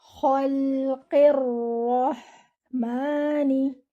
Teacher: your ra should be heavy. Join your ra with the ha.